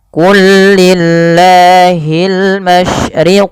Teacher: pelafal qul lillah lamnya diidghamkan ke huruf lam setelahnya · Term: idgham mutamatsilain